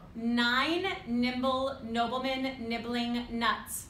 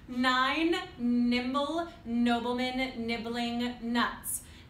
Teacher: it is a nasal sound and the soft palate has to drop, but you're also practicing getting your tongue tip to the alveolar ridge